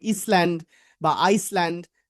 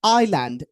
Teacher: এস এর উচ্চারণটা এখানে সাইলেন্ট। মানে এস এর এস এর উচ্চারণ হবে না।